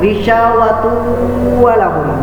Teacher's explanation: Jadi tanwin bertemu dengan waw, maka cara membacanya itu didengung. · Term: idgham bi gunnah